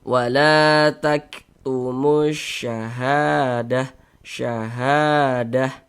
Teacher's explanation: Kalau ada alif sebelumnya ada tanda baca fathah, maka huruf yang memiliki tanda baca fathah ini dibaca panjang. Sehingganya ha kita baca panjang. Mad thobi'i panjang dua harakat.